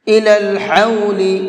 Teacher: یہ بڑا حا ہے، اس کو حلق سے نکال کر کے پڑھیں گے